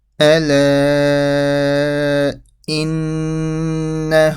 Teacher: So you have the mad and the ghunna.